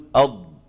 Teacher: الضغط والاتكاء فين على الحافتين اليمنى واليسرى اما الطرف الامامي ففيه مشاركه لكن ما عليه ضغط واتكا ان ضغط المتكلم على الطرف سيؤدي الى نطق ايه د دال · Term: الضاد